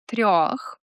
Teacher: The soft R in a word like трёх asks you to keep the roll going while raising the middle of your tongue.